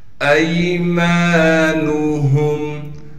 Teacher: ایمانہم، حمزہ کو یا سے ملائیں گے اس لیے کہ یا ساکن ہے۔ میم کے بعد الف مدہ ہونے کی وجہ سے میم کو ایک الف کی مقدار کھینچیں گے۔ نون کو بغیر کھینچے پڑھنا ہے۔